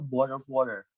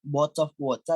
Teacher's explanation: untuk pronounce T atau T, kalau di Amerika itu jadi D, tapi kalau di British tetap T